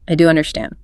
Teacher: all the vocal weight must land heavily on the word do. The pitch of your voice needs to go up slightly and the volume needs to increase right on that single syllable >> and you really have to lean into it. · Notice how the physical drop in the voice after the word do is what anchors the confidence. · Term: do for emphasis